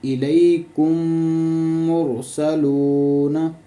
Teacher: میم ساکن ہے، اس سے آگے جو میم ہے اس پہ شد ہے تو ہم نے اس کو ملا کر غنہ کرنا ہے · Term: ادغام شفوی